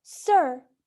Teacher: A in sir is an open mid-central unrounded vowel. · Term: central vowels